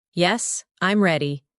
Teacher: And answers flow downward.